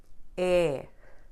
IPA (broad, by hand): ɛ